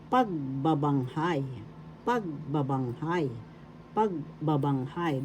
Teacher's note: The accent is on the first syllable